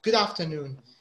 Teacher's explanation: It's not good afternoon. There's no separation. You say it like it's one word. · So the D sound is linked to the A. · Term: link in sound